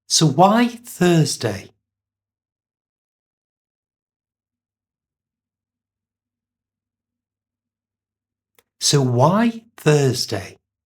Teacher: So, why goes up Thursday comes down. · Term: pitch